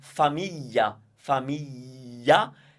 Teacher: there is no g sound and there is no l sound. Neither, because basically that's a sound in and of itself. It's the y sound. So once you get it, you have to also remember that the GLI is the way we maintain the y sound when we need to match it with another vowel.